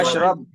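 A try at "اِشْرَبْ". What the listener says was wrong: इशरब, जबर नहीं आता है हमसे पे, या तो जेर आएगा या पेश है। इक़रा इशरब।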